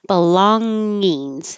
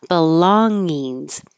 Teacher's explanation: This middle G NG combination is the NG where the back of your tongue goes very high in the back of your throat and touches the top.